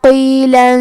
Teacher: قاف کی ادائیگی زبان کے جڑ اور تالو کے نرم حصے سے ہے، قاف حروف التفخیم میں سے ہے تو ہم یہ حرف کو موٹی آواز میں پڑھیں گے۔